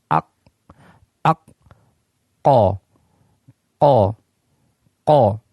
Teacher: Sehingga ya ketika lidah kita bertemu dengan langit-langit yang lunak ini, maka memungkinkan tidak adanya udara yang keluar. Ya, ketika terjadi benturan antara pangkal lidah kita dengan langit-langit bagian yang lunak, maka di sana akan menyebabkan terhalangnya udara keluar ketika mengucapkan huruf ini, sehingga makhrajnya tertutup. · lidah yang paling belakang menempel pada langit-langit bagian yang lunak. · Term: qaf